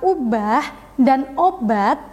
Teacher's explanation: bunyi vokal U dan o dalam kata ubah dan obat diucapkan dengan gerakan lidah bagian belakang yang sedikit lebih rendah daripada gerak lidah bagian depan atau Tengah